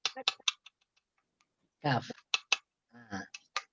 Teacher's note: Keluar daripada pangkal lidah lebih ke depan sedikit daripada qaf.